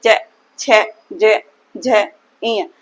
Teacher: इन सभी का उच्चारण स्थान तालू है